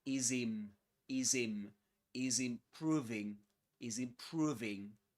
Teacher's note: Is im. The final z at the end of is connects with the initial vowel sound in the next word. Improving. So we say is im, is im, is improving, is improving.